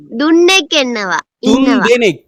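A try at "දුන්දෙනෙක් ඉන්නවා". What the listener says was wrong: துந்தெனெக் துன் இல்ல துந்தெனெக் இன்னவா.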